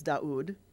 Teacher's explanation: So it's U instead of W. It's still got a little bit of a W sound in it.